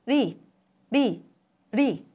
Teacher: In the pronunciation of 논리 in Korean, the 느 sound changes to 르 sound. When the second syllable 리 is pronounced independently, 르 sound is a flap sound.